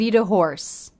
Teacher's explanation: notice the te at the end of the word eat links to the next word uh the schah sound so it's a flap t or a